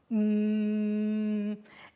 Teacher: if you produce M everything will vibrate but your vocal cords especially will feel as they are moving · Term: voiced